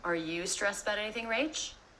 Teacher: Every word there was quite fast except for the word you. It's a little uncommon to stress a function word like this.